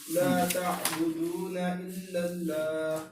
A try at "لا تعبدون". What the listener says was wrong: یہ دو کو تھوڑا سا لمبا کر رہے ہیں آپ. واو مدہ. ہاں جی حروف مدہ 3 ہیں، الف واو یا.